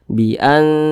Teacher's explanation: cara membunyikannya itu disamarkan kemudian juga didengungkan. Akan tetapi dia lebih condong berbunyi n. Jadi tapi disamarkan ya. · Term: ikhfa hakiki aqrab